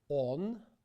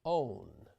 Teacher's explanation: The Russian o has no diphthong versus in English where you have the OW, O.